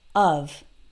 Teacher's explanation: The O sounds like of. It's almost like a really short U sound, like in the word but.